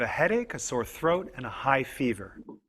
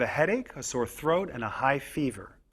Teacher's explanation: when we say a list of items the voice often goes up on each item before the last one the voice goes down on the last item in the list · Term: intonation of lists